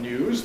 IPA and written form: njuːz (news)